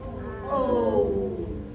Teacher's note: it kind of starts open and then it closes, but not all the way